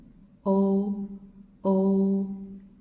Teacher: Next one, O. This is between A and U. So this is O halfway from A to U.